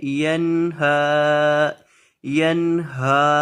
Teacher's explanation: اکثر لوگ یہاں گنہ کر دیتے ہیں، اس کو پڑھ دیتے ہیں ینہا، یعنی نون پر گنہ کر دیتے ہیں، ہا کو لمبا ہی نہیں کرتے۔ ہا کو لمبا کریں گے کیونکہ ہا کے اوپر کھڑی زبر ہے، اور نون کو گنہ نہیں کریں گے کیونکہ یہاں نون کے اوپر گنہ نہیں ہوگا۔ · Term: گنہ نہیں کرنا